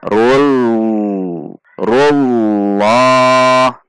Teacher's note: La juga tidak dengan membulatkan bibir, tidak dengan loh, namun la biasa saja dengan menegangkan pangkal lidah supaya dia naik. La 2 ketuk.